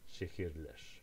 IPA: ʃehirler